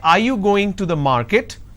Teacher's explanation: So when I say, are you going to the market, there is a rising tone.